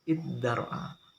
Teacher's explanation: Digantinya ta dengan dal karena dekatnya makhraj keduanya. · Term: diganti dal